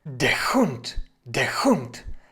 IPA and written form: deːɐ̯ hʊnt (der Hund)